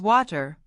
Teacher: Americans don't drop the R. In fact, they love it. Water becomes water, not water. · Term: American R